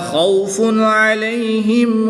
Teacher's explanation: تنوین کے بعد عین حرف حلقی میں سے آ گیا تو یہاں پر اظہار ہوگا، تنوین کو خوب ظاہر کر کے پڑھیں گے